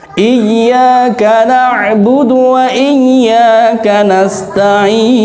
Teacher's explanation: Itu ketinggalan tasydidnya. Mestinya ditekan dikit. Pastikan bahwa iya yang pertama sukun, yang kedua hidup.